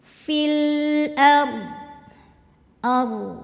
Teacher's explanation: ketemu sukun pemanjangnya gugur lamnya jangan mantu ya fil ARD ARD r-nya tebal karena sebelumnya fathah cara nebelinnya ya sama ya tegangin lidahnya atau Pangkal lidah ngangkat